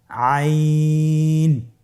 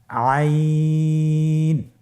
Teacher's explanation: আইন হরফটি কণ্ঠনালীর মধ্যখান থেকে উচ্চারিত হয়।